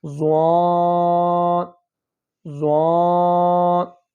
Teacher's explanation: اس کے اندر آپ کی زبان زیادہ دانتوں کے ساتھ نہیں لگ رہی، زبان نیچے ہی ہے